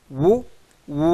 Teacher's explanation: ఓష్యములు అనే పదానికి అర్థము పెదవి ఓష్యములు అంటే పెదవులు అర్థమైంది కదా చూడండి ఉ ఊ అనేది పెదవుల యొక్క సహాయంతోనే పలుకుతుంది